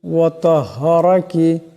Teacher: এখানে রার উপর জবর আছে, এটাকে মোটা করিয়া পড়তে হবে।